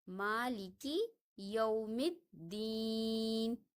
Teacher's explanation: یومی کے میم کو ہم دال کے ساتھ ملاتے ہیں، نہ الف کو پڑھا جاتا ہے اور نہ لام کو، کیونکہ دال حروف شمسی میں سے ہے، اس لیے ہم یہاں پہ پڑھیں گے مالکی یوم الدین۔